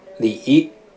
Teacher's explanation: 三声呢是经历一个转折，三声称为赏声，它是2到1到4 · 三声称为赏声，它是2到1到4。比如说李，它是由一个本身就比较低的二音起步